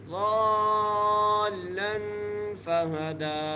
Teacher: ضالن لام پر جو ہے غنہ کریں گے. فہدا دال کو ایک الف مقدار کھینچ کے پڑھیں گے